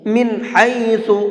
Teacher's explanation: اس نون کو ظاہر کر کے پڑھیں گے، صاف صاف پڑھیں گے، یہاں پر غنہ اخفا نہیں کریں گے ۔ من حیث، اس طرح سے، افاض الناس، یہاں پر بھی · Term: نون ساکن